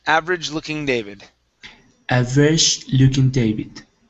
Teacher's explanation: Okay, now this is going to be average instead of average. Okay, so we're not going to pronounce that E. So it's average.